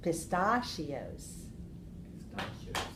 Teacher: So 1, 2, 3, 4. 4 syllables. Stress the second. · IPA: pə-ˈsta-sh(ē-ˌ)ō